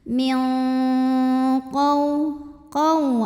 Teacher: maka nunnya dibunyikan samar-samar siap-siap ke qaf disertai dengung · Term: ikhfa ab'ad